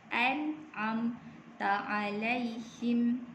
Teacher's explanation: Okey, mim berjumpa dengan ta. Mim yang bertanda sukun selepas di huruf ta, nama dia ialah izhar syafawi. Dia juga dibaca tanpa dengung.